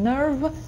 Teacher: Потренируйтесь, если плохо получается, как будто «э», nerve, nerve, достаточно говорить. Я говорю nerve, у меня американское произношение, я говорю «р». Вы не обязаны его говорить.